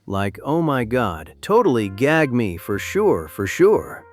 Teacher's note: The rising intonation at the end of every sentence turned statements into questions